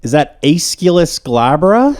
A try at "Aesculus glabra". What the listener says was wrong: It's not wrong. It's just different. I would just do Aesculus. Yes, I wouldn't put so much emphasis on the U. And not Aesculus. But I would just go Aesculus.